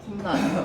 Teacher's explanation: 원래 형태소에서는 코 플러스 날인데 이게 니은이 지금 들어갔잖아요. 첨가가 됐잖아요. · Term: 니은 첨가